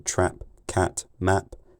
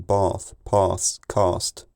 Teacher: Southeastern English accents have a split between the vowel in trap cat map and the vowel in bath Pass cast